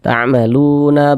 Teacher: ada harakat damah maka huruf yang memiliki harakat dah dibaca panjang sehingganya lu dibaca panjang Mad Thobi'i panjang dua harakat